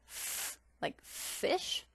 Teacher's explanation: placing the teeth over the bottom lip